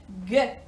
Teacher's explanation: if you feel on your throat, G, you can feel it makes a sound. So this is a voiced one